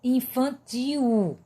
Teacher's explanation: O I também, ti. E o L vai ser representado por U, infantil. O som do L sai o som do U.